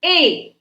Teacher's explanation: इसमें कंठ और तालु दोनों का प्रयोग हो रहा है, इसलिए इसको कंठ तालव्य वर्ण कहा जाता है।